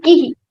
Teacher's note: if you have ka, e and visarga, then it will become kihi. Hi sound will come in the end.